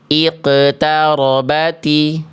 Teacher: Dilafalkan dengan pantulan yang karakternya kurang tebal. Nah, qof itu termasuk ke dalam huruf yang tebal, Bunda.